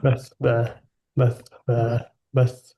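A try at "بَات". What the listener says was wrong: বাট না, নিচে চলে যাচ্ছে। যিনি বলছিলেন আমি জানি না কে, বাট টাংটা তিতে লাগছিল, হ্যাঁ, টাংটা তায়ের মাখরাজে রাখতে হবে। বাত, বাত,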